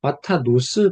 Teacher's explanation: 강세가 없는 동시에 폐음절이기 때문에 오 소리가 난다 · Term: 카메츠 핫투